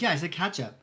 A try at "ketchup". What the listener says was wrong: You're saying ketchup, like cat. Like give it some New York to it.